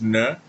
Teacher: Ponta da língua atrás dos dentes. Nã meio voltadinha para trás. N retroflexo.